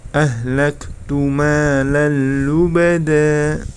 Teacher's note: terdapat tanwin bertemu dengan huruf lam maka itu hukum bacaan Idgham bilagunnah maka cara membacanya tanpa mendengung ya langsung masuk tren tetapi tanpa mendengung eh Lettu meneluh beda